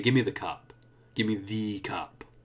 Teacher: If I say it like that, I'm putting my stress on the, and so I'm showing you that it's important that it's that one. And I'm putting more stress on it for a special reason.